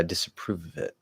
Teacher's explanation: want to drop the v on of disapproval it it's like we really want that v to link to that vowel sound